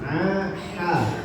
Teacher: adanya di tengah-tengah tenggorokan atau wasul halqi